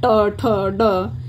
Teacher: जो जीवा की नोक होती है ना नोक वो होता है जीवा का अग्र भाग वो मुर्धा को स्पर्श करने के बाद वायु बाहर आए तो मुर्धा ध्वनियां होती हैं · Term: मूर्धन्य ध्वनियां